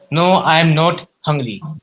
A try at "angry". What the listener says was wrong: Angry. If you would say hungry, you would make a sense कि I'm not hungry.